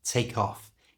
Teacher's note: To say this in a natural, fast way, we can connect these two words together. And we do that by moving the k sound from the end of take to the front of the o in off